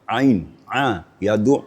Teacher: Ain makhrajul hurufnya atau makhrajnya adalah ee wastul halaq. pertengahan tenggorokan dia terasa getarannya